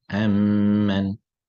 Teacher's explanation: Two letters become one that is mushaddad. You leave out the first meme, you go straight into the second one with the shadda. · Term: idgham